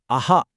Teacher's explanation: ఇక ఫైనల్గా విసర్గ. ఇది అచ్చు తర్వాత ఒక చిన్న బ్రీతి హ సౌండ్ ఇస్తుంది. ఉదాహరణకి అహా అన్నప్పుడు చివర్లో వినిపించే సౌండ్.